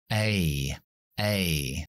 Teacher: y su sonido fuerte desabocado es como suena en el abecedario en realidad es un diptongo son dos sonidos juntos una e y una y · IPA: /eɪ/